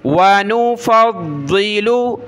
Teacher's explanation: वनुफ़द्दिलु, फ़ा को ज़ाद के साथ मिला, ज़ाद को हमने मोटा पढ़ना है, सख्त करना है तशदीद की वजह से